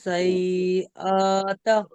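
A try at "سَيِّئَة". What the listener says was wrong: না, সাই আরটা হবে না, ওটা সি আত। জবর, সিমের উপরে জবর থাকলে সাই হতো, সিনের উপর জের সিনের নিচে জের আছে।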